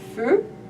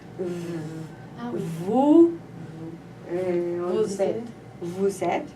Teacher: la différence entre F et V, c'est les cordes vocales qui vibrent.